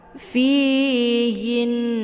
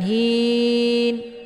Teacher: sempurnakan dengungannya dulu kemudian baru sukunkan harakatnya fihin bukan Hin ya jadi enggak dibaca panjang tapi didengung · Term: gunah musyaddadah